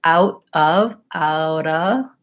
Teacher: Same end sounds, flap T and schwa, da. But the first vowel is ow, which is the diphthong going from ah to o. Oughta versus oughta.